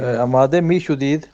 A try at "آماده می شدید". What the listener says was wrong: Good.